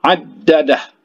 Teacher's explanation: Kemudian addadah, huruf dal ditahan itu karena itu ada tasydid di atasnya